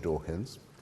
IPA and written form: ˈdɔːkɨnz (Dawkins)